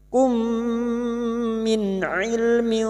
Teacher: 'Indakum, dakum, mim sukun bertemu mim, idgham mimi, bertemunya 2 huruf mim, masuk pada huruf mim berikutnya disertai mendengung selama 3 harakat